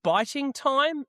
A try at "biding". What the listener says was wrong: No, you said biting with a T.